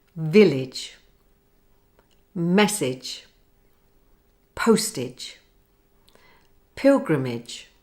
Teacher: as in the word Village to get the I sound right your tongue should be high and Central your jaw fairly closed and your lips spread